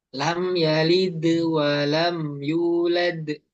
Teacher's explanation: yang di akhir tuh qalqalahnya agak kayak tertahan dikit